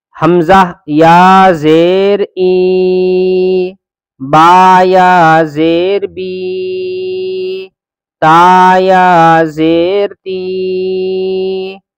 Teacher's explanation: آج کے سبق میں صرف یہ بتایا گیا ہے کہ یا مدہ یعنی یا سے پہلے اگر زیر ہو تو یا مدہ ہوگا۔ یا مدہ کا مطلب یہ ہے کہ اس کو ہم ایک الف کی برابر کھینچیں گے، یعنی تھوڑا سا 1 سیکنڈ کھینچیں گے